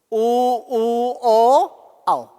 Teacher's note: जब आप ऊ का और ओ औ का उच्चारण करते तो आपकी जीवा गोल हो जाती है और गोल होकर के पीछे चली जाती है। देखो, ऊ ओ औ पीछे चलेगी। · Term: पीछे का भाग सक्रिय